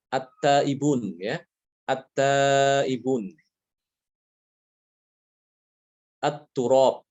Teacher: Dia dibacanya at-turab bukan al-turab. At-taibun bukan al-taibun. Ya, itu lam ta'rif itu beda, ya, hukumnya, ya. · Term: idgham